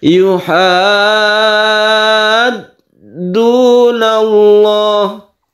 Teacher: Syiddah atau tasydid yang ada di huruf dal ini dibaca setelah kita panjangkan haknya. Kita panjangkan haknya 3 alif dulu, baru kita tasydidkan. Yuhad. Baru kita tabrakkan ke dal ya. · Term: mad lazim mutawal